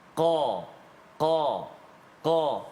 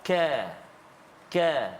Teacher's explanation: qaf, dia ada sifat tebal dia. qa, qa, qa. Kaf dia tak tebal.